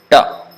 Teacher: the tip of the tongue touches the top of the hard palate.